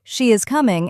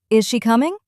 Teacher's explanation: statements usually have a falling tone, while yes or no questions often have a rising tone. Compare the sentences, she is coming and is she coming? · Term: Intonation